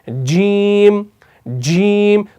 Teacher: जब आप जुबान ऊपर लगाते हैं हार्ड पैलेट के साथ, तो यहां पर आवाज और एयर फ्लो दोनों बंद हो जाते हैं।